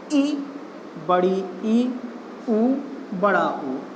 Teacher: जिन स्वरों के उच्चारण में मुख सबसे कम खुलता हो, उन्हें संव्रत कहा जाता है